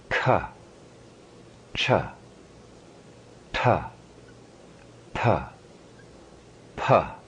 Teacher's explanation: The second vertical column, red-orange, meaning letters which are hard but with full breath, aspirated.